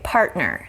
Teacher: you can already hear that T in the middle is a stop.